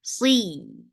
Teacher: sod is heavy for kasra, give e sound attached with ya.